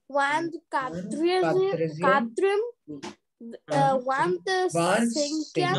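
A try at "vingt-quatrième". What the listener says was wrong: No, don't pronounce this T. This G and T don't pronounce. Vantcatrium like this.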